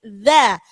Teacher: I-nya alifnya huruf tipis, dalnya huruf tipis, maka alifnya harus bunyinya i, kemudian dzanya ujung lidahnya digigit, dza. Walaili idza, jangan sampai iza ya.